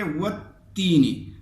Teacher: ٹھیک ہے، یہ لام بھی آپ نہیں پڑھیں گے، والتین نہیں پڑھیں گے بلکہ والتین پڑھیں گے، واو کو تا سے ملائیں گے، اور یہ الف لام دونوں یہ سائلنس ہیں، یہ نہیں پڑھے جائیں گے۔ یہ لفظ کی خوبصورتی کے لیے یہاں پہ لکھ کے گئے ہیں لیکن پڑھے نہیں جاتے، تو اس کو ہم پڑھیں گے والتین۔